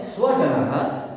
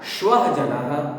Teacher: स्वजनः, ये स, दंत स है, उच्चारण करते हैं, दांत, जीभ जो है दांत दंत स्थान को स्पर्श करती है, इसलिए ये स्वजन उच्चारण करते हैं।